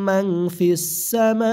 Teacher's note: নুন সাকিনের পরে ফা ইকফা গুন্না